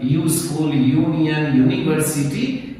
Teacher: U producing U sound is treated as consonantal sound.